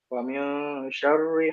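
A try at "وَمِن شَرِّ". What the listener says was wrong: Tebel ya? Tuh, cenderung tebel lagi.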